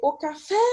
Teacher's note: a última sílaba é a mais forte